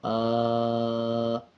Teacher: اسی طرح اب اس کو یوں پڑھا جائے گا، حمزہ کھڑا زبر آ، کھڑا زبر 1 سیکنڈ لمبا کر کے پڑھا جائے گا۔